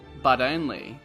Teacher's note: for Americans and Australians the T becomes a flap te which sounds like a D sound but only try and